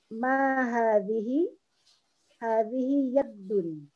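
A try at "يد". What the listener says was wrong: Yadun, bukan yadun tapi yadun. Ya, tanpa tasdid ya. Yadun.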